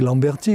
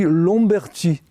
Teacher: La différence entre Lamberty et Lomberty, c'est qu'il y a un changement de timbre de la voyelle. Le A passe à O devant un M qui est une bilabiale, donc il a tendance à nasaliser. Donc en réalité, le Lomberty, ce n'est qu'un avatar, si l'on veut, de Lamberty.